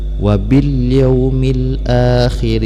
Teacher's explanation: alif lam bertemu dengan ya, ini disebut dengan alif lam qamariyah, dibacanya ilhar, jelas, ya. Tandanya adalah tidak ada tasydid pada huruf depan lam dan ada tanda sukun pada di atas lamnya.